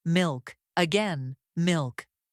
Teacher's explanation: The dark L blends smoothly into the K.